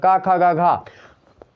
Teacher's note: आपको जो है नाक के सहारा नहीं लेना पड़ेगा